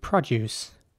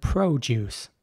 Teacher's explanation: again the O is pronounced like an uh